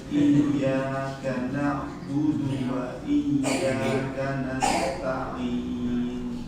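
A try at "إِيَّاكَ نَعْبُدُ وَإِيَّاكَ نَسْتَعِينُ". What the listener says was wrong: Jangan seperti terpenggal. Sambung aja, coba.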